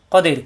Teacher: দি একালিপ টানকে তিন আলিপ টানতে হবে, কদির, কাদির হবে না, কদির।